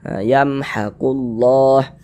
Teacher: Tapi nanti kalau harokat fathahnya itu bentuknya berubah seperti ini, berdiri seperti ini, berbentuk alif kecil seperti ini, huruf kalau di atasnya ada tanda seperti ini dibaca panjang. Sehingga ini lafaz Allah dibaca panjang, mad tabi'i panjang 2 harokat.